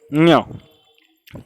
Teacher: नाक के द्वारा और गले से स्वरों के साथ आवाज़ निकलती है